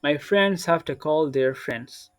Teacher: So their friends, not friends. There'll be no D sound. The D will be silent.